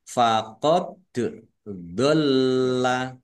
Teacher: dal sukun, bacaan kolkolah, dibaca memantul, ditampakkan pantulannya. Faqad dolla, nah, do agak berat ya.